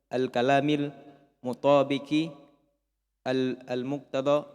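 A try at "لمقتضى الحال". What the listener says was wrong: Tidak ada alnya.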